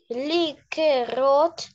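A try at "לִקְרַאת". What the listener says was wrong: Ликрат. Здесь нет О, смотри, ликрат.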